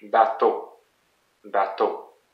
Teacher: So again, two syllables, ba, and it's the last one that is the most emphasized